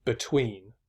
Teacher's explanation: The first syllable is unstressed. The second syllable is stressed. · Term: iambic